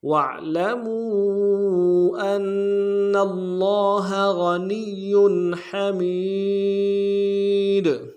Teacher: ہا کو گہرائی سے ادا کریں گے، میم کو یا کے ساتھ ملانا ہے، یا مدہ ایک الف دار میں کھینچیں گے، تاکہ اوپر تنوین ہے غنہ کریں گے.